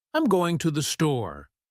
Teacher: We stress store because it's the key word.